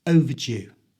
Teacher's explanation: To say overdue correctly, the ER becomes a schwa sound. That's a little sound that's so common in English. And the D is pronounced as a j sound, so it's overdue.